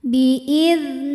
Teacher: yang sukunnya ini sukun asli dan ada di tengah bacaan kita maka huruf ba ini kita pantulkan dengan pantulan yang kecil · huruf nun dipanjangkan 2 harokat saja · Mad Thobi'i zohiri sebab ada ya sukun yang sebelumnya berharakat kasrah cara membacanya huruf nun dipanjangkan dua harakat saja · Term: Qalqalah Sugra, mad tabi'i dhahiri